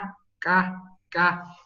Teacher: el sonido es más hacia atrás en la parte de la garganta y ahí es donde se hace el cierre si nosotros pronunciamos sentimos aquí un pequeño cierre un pequeño expuesto